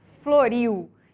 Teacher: em que a sílaba tônica é Rio e prestem atenção é a sílaba mais forte de floriu é a última sílaba da palavra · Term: oxítona